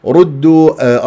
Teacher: الراء مفخم لانها مضمومه · الدال شديده قويه مجهوره